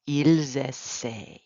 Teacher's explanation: We're not pronouncing that ENT.